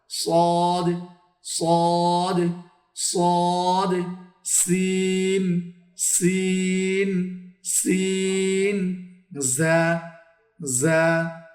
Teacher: জিহ্বার আগা সামনের নিচের দুই দাঁতের পেট ও আগার সঙ্গে লাগিয়ে তিনটি হারাফ উচ্চারণ হয় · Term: 12 নম্বর মাখরাজ